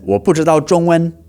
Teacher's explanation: his zhongwen was both the first tone, the high-level tone. So it should have been zhongwen, but you know, the other tones were actually pretty good.